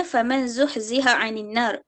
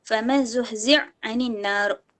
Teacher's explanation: yudghamu al-ha fil ain, iaitu idghamkan ha ke dalam ain